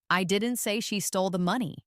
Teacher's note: Now, let's emphasize the word she. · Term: emphasis